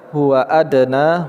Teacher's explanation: huruf dal sukun di tengah kata, qalqalah sugra